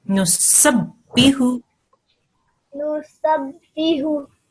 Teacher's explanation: Good. Remember, this is a ba with a shadda on top, so we have to harden that sound. Ba mushaddad.